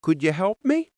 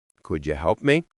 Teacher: if you say something with rising tone, like, could you help me? It sounds polite and curious. But if you say it flat, could you help me? It sounds bored or even annoyed.